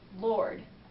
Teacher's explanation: R plus consonant, and that is you're gonna drop it. So you just don't even say it. So it's like in Lord, like, because there's a consonant, it's L-O-R-D.